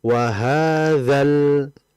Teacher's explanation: kalau kita lanjut wasol, maka alif itu tidak dibaca. Dia langsung kepada lam matinya. Jadi langsung wahadzal, seperti itu.